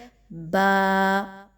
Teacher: बा जो है वो कहां से अदा होने वाला लेटर है वो होठों से अदा होने वाला हर्फ है दोनों होठों को जब हम उसके बाहर के हिस्सों को आपस में मिलाते हैं और तरी वाले हिस्से भी आपस में मिलते हैं तो बा की अदायगी होती है